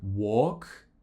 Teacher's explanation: pronouncing it more as an or like walk with more of a round shape with the lips